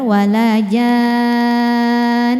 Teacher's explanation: Maka jimnya wajib panjang 6 ya. Kemudian masuk ke nunnya kita dengungkannya. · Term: mad lazim mutsaqqalqilmi